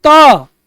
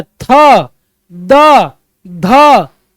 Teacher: अब आप कहोगे दंत्य मतलब दांत का प्रयोग। आप बोलो त, जीभ जाकर दांत पे लग रहा है,